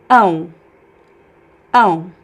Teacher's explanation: the O becomes a weak U sound at the end of words when they are unstressed.